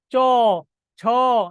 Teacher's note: উচ্চারণ করার সময় আমাদের তালু থেকে জিহ্বা হিট করে। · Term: তালব্য বর্ণ